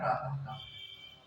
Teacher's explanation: विसर्ग का उच्चारण होता है कंठ